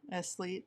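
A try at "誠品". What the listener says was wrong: It's actually pronounced elite, I think. So, but they didn't say the S, but I'm just gonna say Esleet because it's how you spell it, Eslite.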